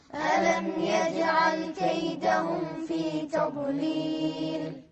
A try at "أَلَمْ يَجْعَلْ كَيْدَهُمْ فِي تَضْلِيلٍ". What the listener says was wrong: يجعل غلط، في قلقلة هني. يجعل. شنو أحرف القلقلة؟ من يعرف أحرف القلقلة؟ قطب جد، يعني إذا جاءت هذه الحروف ساكنة نقلقلها، مثل يجعل، مثل قل هو الله أحد، نركز عليها. ألم يجعل كيدهم في تضليل؟